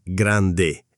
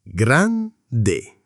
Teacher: Grande non è grande, è grande, con la D marcata. Piccolo non è piccolo, è piccolo, 2 C che si sentono.